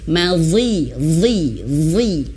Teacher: Zu, zong, zoni, zozna, minal muzni, mazi, zong, zoni, zo. Dan ketika huruf zo kasrah pun tetap tebal.